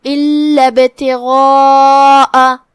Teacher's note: غین حروف التفخیم میں سے ہے لہذا ہم غین کو بھاری آواز میں پڑھیں گے اور اس کے بعد جو کہ مد ہے تو مد کو بھی بھاری آواز سے ادا کرنا ہے کیونکہ مد الف اپنے پیچھے والے حرف کا حکم لیتا ہے وہ چاہے تفخیم ہو وہ چاہے ترقیق ہو.